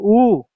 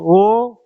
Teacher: ऐसे स्वर को बोलेंगे जिसमें जो ओठों का आकार है वह कैसा हो जाए हमेशा गोल हो जाए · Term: वृताकार